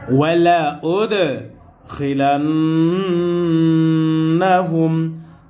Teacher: ওয়ালা উদখিলান্নাহুম, হা মিম পেশ হুম, হা মিম সাকিনকে ধরেছে, মিম সাকিনে ইজহার গুন্নাহ সারা স্পষ্ট হবে